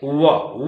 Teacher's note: वह दंत और ओष्ठ जब मिलेगा, जिह्वा आ जाएगी तो दांत और ओष्ठ, देखिए वह आप बोल रहे हैं, जिह्वा भीतर चली गई, वह बोलते समय ओठ और दांत दोनों पास पास हैं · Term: वकार